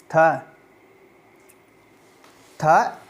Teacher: थ स्पर्श, अघोष, महाप्राण और दंत व्यंजन ध्वनि है।